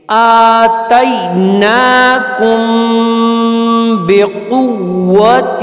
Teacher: اب یہ دیکھیں آتیناکم میم پہ ساکن ہے، لیکن میم کے ساکن کے بعد با آ رہی ہے، ٹھیک ہے. تو میم ساکن کے بعد جب با آئے گی تو اس کو ہم ملا کے پڑھیں گے